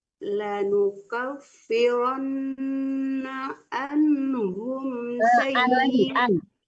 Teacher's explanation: Jangan an, tapi an dilenturkan di tengah-tengah tenggorokan